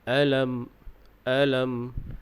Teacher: Dalam ayat yang dibacakan tadi, dari segi bacaan yang perlu kita ambil perhatian iaitu pada sebutan huruf Hamzah. Huruf Hamzah ini makhrajnya di pangkal kerongkong, yakni berdekatan dengan bahagian dada. Jadi bila kita sebut A, maka bunyinya keluar di bahagian pangkal kerongkong.